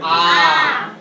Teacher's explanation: दीर्घ स्वर में अगर हम बोलेंगे तो आ, उसे बोलने में हमें डबल समय लगता है